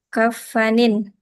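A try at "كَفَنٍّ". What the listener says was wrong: Nunnya tasydid. Fan.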